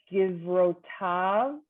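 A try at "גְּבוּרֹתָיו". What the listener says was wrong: Vu, don't forget the u.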